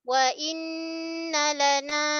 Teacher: Makhraj lam tepi hujung lidah gusi atas la. Dia baca dengan keadaan nipis saja